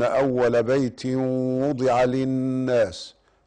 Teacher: بيت وضع تنوين وأتى بعد الواو فيسمى إدغاما بغنة